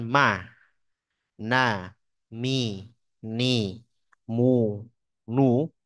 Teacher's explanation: contohnya berarti mim dan Nun berharakat kita mengucapkan ma na mi ni mu NU itu sudah ada gunahnya